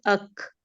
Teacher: ہمس کی ادائیگی کو بہت زیادہ واضح نہیں کرتے. کاف کے مخرج میں ہمس زیادہ واضح ہوتا ہے، لیکن وہی بات ہے کہ اگر اس کو بھی ہم کھے کی طرح کریں گے تو وہ غلط ہو جائے گا